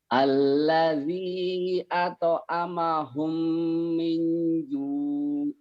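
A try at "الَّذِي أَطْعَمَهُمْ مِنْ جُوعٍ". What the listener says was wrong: Itu neken Pak ini. Min-ju', kada ada ain ujungnya. Terus Bapak tadi di yang merah ini kurang nih, kol-kolah. Alladzi at'amahum, hum-nya idgham mimi ya, atau idgham mutamatsilan. Alladzi at'amahum minnya juga ditahan karena coklat.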